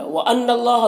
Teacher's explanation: نون مشدد غنہ ہوگا اور اللہ کے لام کو پر پڑھیں گے. کھڑا زبر ہے ایک الف کے برابر کھینچیں گے.